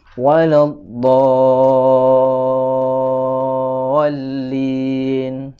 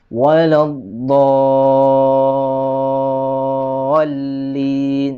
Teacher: Ini panjangnya mad lazim kalimi mutsaqqal adalah 6 harokat